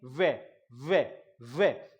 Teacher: वे का उच्चारण स्थान होता है साथियों, संस्कृत में हम लोग पढ़ते हैं वकारस्य दंतोष्ठ, वकारस्य दंतोष्ठ, मतलब वे का उच्चारण स्थान दंत और ओष्ठ होता है · आप बोल के देखिए, वे होठों का पूर्ण रूप से योगदान है, साथ में दांत के भी जीवा स्पर्श कर रही है